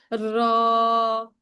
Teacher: জিহ্বাটা উল্টা হবে, যেমন অনেকে বলে না, তাকরার করে বলে র, এরকম তাকরার হবে একটু, হ্যাঁ মানে বারবার উচ্চারণ হবে